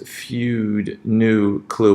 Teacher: it kind of extends and you sort of round your lips more as you go along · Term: ooh sound